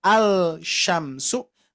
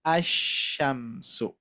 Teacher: huruf lam ini, Bapak Ibu sekalian, ketika bertemu dengan huruf shin, salah satu di antara huruf syamsiah, ya, huruf matahari, maka shin ini sebagai huruf simbol matahari, maka lam ini tidak dibaca, ya, tidak dibaca, atau dalam artian tadi tidak terlihat. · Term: idgham